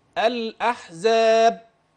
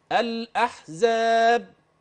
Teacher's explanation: تسمع الدال ايضا اه انما انظر حينما ينفتح المخرج فقط الاحزاب انا عملت سكته لطيفه عشان تلاحظ الفارق بين انغلاق المخرج بانفتاحه يحدث الصوت الزائد اللي هي القلقله